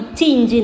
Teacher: நாவினுடைய இடைப்பகுதி நடு அன்னத்தினுடைய இடை பகுதியில் இருந்து தொட்டு பிறக்கும்